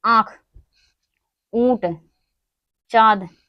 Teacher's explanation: अनुनासिक स्वर ध्वनियां होती हैं जिसका उच्चारण मुख और नाक की सहायता से किया जाता है। अनुनासिक जो स्वर होती हैं ध्वनियां जो होती हैं उनका जो उच्चारण है मुख और नाक से किया जाता है।